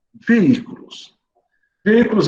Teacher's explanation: ele é acentuado porque a antepenúltima sílaba é a mais forte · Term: proparoxítona